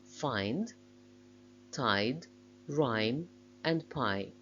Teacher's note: it glides in the direction of the closer vowel I, which makes it a closing diphthong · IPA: aɪ